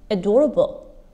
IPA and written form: əˈdɔːrəbl (adorable)